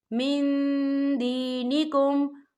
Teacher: نون ساکن کی آواز کو ناک میں چھپائیں گے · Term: اکفا